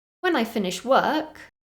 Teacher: at the end of the first part of that sentence my voice went up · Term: intonation